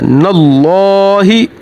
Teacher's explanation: यहाँ पर मीम मुतशद्दद है, मीम मुतशद्दद पर हमेशा गुन्ना होगा और लाम से पहले ज़बर है, लाम मोटा पड़ा जाएगा। अल्लाह का नाम है, यहाँ पर लाम मोटा पड़ा जाएगा